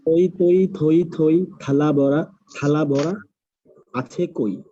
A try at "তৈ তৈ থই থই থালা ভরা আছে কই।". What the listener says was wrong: Good. ভরাটা কিন্তু প্রথম দুবার কানে লাগছিল,